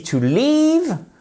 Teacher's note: to leave, prononciation exactement comme dans beach, d'un I long. Le EA est prononcé par un I long, ok?